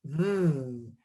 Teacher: the letter F and the letter V are almost the exact same sound. It's your teeth, your upper teeth on your lower lip. But my sound for F will just have air and no voicing.